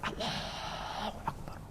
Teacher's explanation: Hanyalah bisikan. Suara itu dia dengar tapi tak jelas huruf.